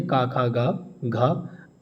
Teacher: ये इनका उच्चारण जो होता है वो कंठ से होता है